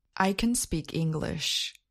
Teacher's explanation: Note that the content words, such as speak and English, are stressed. Note that the auxiliary verb can is not stressed.